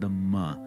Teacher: nasal of the labial class the m sound the ma very straightforward nothing weird about it at all the only thing to note